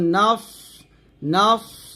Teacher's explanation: সদ সিনের মত উচ্চারণ করা যাবে না সদ মোটা উচ্চারণ করতে হবে